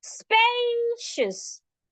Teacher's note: We're saying the space louder, longer, and clearer.